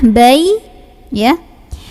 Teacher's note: huruf Ya keluarnya dari tengah lidah bertemu dengan langit-langit Tengah